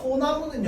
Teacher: 소나무는 솔 플러스 나무인데 솔의 리을이 탈락한 형태로 소나무가 되는 거야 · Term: 리을 탈락